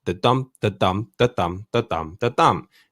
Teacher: the first syllable will be unstressed followed by a stressed syllable. So it's somewhat like a heartbeat.